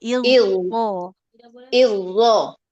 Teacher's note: Huruf zo-nya dulu harus dialirkan suaranya.